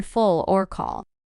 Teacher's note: this l sound feels heavier like in full or call here the back of your tongue is a bit higher in your mouth and the tip isn't as close to your teeth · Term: Dark L, dark L